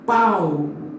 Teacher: o U parece aí, mas aparece bem fraquinho. Então, se a vogal é a maior e a semivogal é a menor, este ditongo decresce. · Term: ditongo decrescente